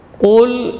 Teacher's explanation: huruf lam tidak boleh tebal karena pengaruh qaf. Qul tetap tipis lamnya.